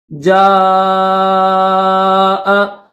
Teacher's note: جیم کے اوپر بڑی مد ہے تو اس کو زیادہ کھینچیں گے